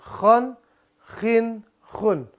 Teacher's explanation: Di mana kho? Makhrajnya di tenggorokan atas.